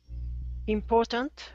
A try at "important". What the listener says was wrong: Okay, very good.